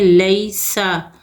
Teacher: یا لین ہوگا، نرمی اور جلدی کے ساتھ پڑھیں گے